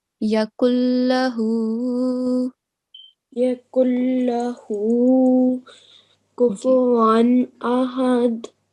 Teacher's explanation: So we are going to apply complete assimilation. Okay, idgham kamil with no nasal sound.